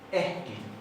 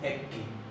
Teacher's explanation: la doble K se pronuncia como HK. Entonces acá hay una aspirada, no es ekki.